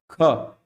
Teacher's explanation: जिसमें ज्यादा वेग से हवा बाहर निकलती है उसे क्या बोलते हैं महाप्राण बोलते हैं जैसे कि ख देखो ख ज्यादा है कि नहीं